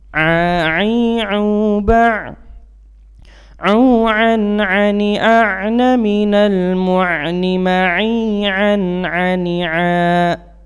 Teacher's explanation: Jadi seolah memantapkan, ya, menekankan huruf A itu dan malah keluar dari rongga hidung kita. Padahal A itu adalah keluar dari tenggorokan di bagian tengah atau wastul halki